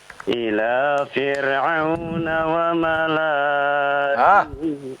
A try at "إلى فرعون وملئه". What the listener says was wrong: Jangan dipanjangkan Pak ya. Ini termasuk kalimat-kalimat yang ya tidak boleh dipanjangkan. Wa malaihi.